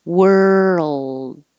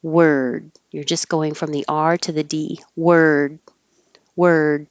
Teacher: hold your tongue in the L position and make the L noise for a little longer duration so it can be heard.